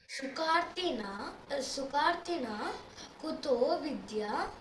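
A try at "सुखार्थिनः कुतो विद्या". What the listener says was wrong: Sukarthinah. There is a visarga, no? 2 dots are there, no? So we'll have to make that sound audible. Sukarthinah kuto vidya.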